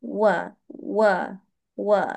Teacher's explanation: huruf wau dia melibatkan dua bibir atas bawah. Okey. Tetapi bukan pertemukan tetapi dimuncungkan